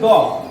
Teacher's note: দ হচ্ছে অল্প প্রাণ এবং সঘোষ একটি বর্ণ